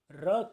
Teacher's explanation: जैसे र के उच्चारण में, जब हम र का उच्चारण करते हैं तो उच्चारण के दौरान जिह्वा में 4 से 5 बार कंपन होता है, इसलिए र को प्रकंपी व्यंजन वर्ण कहा जाता है।